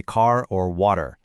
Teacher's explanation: To win this one, you have to abandon your curled American tongue entirely. In English, our R is retroflex. We curl our tongues way back